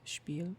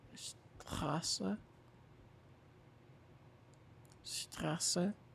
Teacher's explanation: Sp and st are different because they're almost similar, but instead of saying sp and st, it's sh and then p and then st